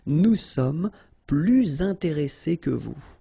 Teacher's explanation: Okay, and in that case, well, you make this little link, little liaison between the two, so you hear a little bit this S